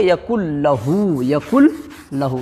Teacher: اس لیے کہ یہاں پر ادغام کا قاعدہ ہے، نون ساکن کے بعد اگر لام آ جاتی ہے تو وہاں پر ملا کر کے بغیر گنہ کے پڑھیں گے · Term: ادغام بلا گنہ